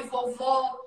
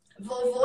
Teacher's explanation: que é, né, o O aberto e o O fechado.